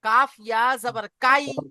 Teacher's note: ইয়ালিনের উচ্চারণ সর্বদাই আই, শেষে আই উচ্চারণ হবে, আই। ইংরেজিতে যে আই, ওই আই উচ্চারণ হবে।